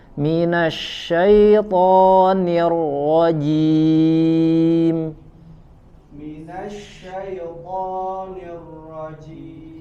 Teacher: Ro-nya sama ditebalkan seperti huruf to.